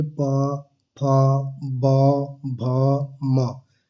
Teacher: ओठ आपका दोनों आपस में मिल रहे हैं, तो इसका उच्चारण स्थान क्या होगा, ओष्ठ हो गया।